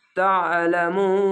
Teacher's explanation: শেষ অক্ষর সাকিন দিলে এক দুই তিন তিনটি অক্ষর তিন আলিফ টেনে পড়বেন মাদ্দে আরজি হবে তা আইন জব তা আইনটিকে মোটা করে গলা